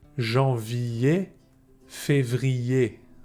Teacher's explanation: The first thing you should know is that with the verbs ending with ER, you must avoid saying er at the end. ER is pronounced E.